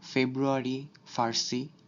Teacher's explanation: আবার বিদেশি শব্দের ক্ষেত্রে সাধারণত এফ এর মতো উচ্চারিত হয়, অর্থাৎ উপরের দুই দাঁত এবং নিচের ঠোঁট এই দুটো লাগিয়ে উচ্চারণ করা হয়, যেমন ফেব্রুয়ারি, ফার্সি ইত্যাদি।